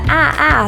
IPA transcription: æ